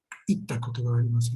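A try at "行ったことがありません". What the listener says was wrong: Itta koto ga arimasen. Good.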